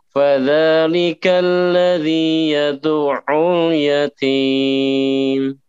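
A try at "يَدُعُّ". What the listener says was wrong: Itu masih agak sedikit menahan. Yad'u. Jadi suaranya jangan sampai terputus. Yad'u.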